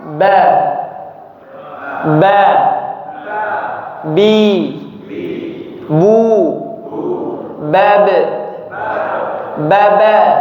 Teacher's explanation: Berasal dari kedua bibir kita. Rapat kemudian lepas. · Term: huruf ba